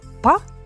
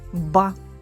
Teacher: порожнині це тверді приголосні звуки якщо прикласти долоньку до горла то вимовляючи звук п ми відчуємо Що голосові зв'язки не працюють Тому це глухий приголосний звук а вимовляючи звук б ми відчуємо Що голосові зв'язки працюють Тому це дзвінкий приголосний звук